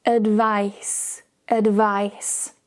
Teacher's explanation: The key difference here is the ending. Notice when we talk about the noun, there's no vibration.